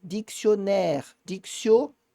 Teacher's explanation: É um O um pouquinho mais aberto